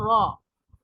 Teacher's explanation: जबान की रूट जो है वह ऊपर उठ जाएगी जबान की जड़ ऊपर उठ जाएगी जबान में कुछ गोलाई होगी आवाज भारी सुनाई देगी · तो इसी तरह रॉ इस आवाज के साथ हम पढ़ेंगे। जबान की नोक और ऊपर के तालू पर लगाने से रा अदा होता है। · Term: मोटा